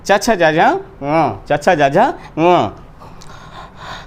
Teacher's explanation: च छ ज झ ङ ये तालु से निकलते हैं, इसलिए तालव्य हैं